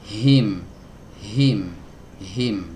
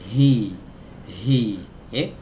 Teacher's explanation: didekatkan pita suaranya, jangan sampai rapat. Kalau rapat dia jadi huruf hamzah, dikasih celah sedikit, dari sana keluar huruf H.